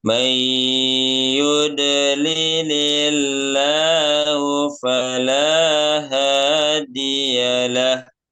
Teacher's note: Allahnya dibaca tipis ya karena sebelumnya berharokat kasroh